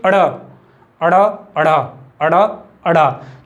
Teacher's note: उत्क्षिप्त व्यंजन का जो उच्चारण स्थान है वो है हमारा मूर्धन्य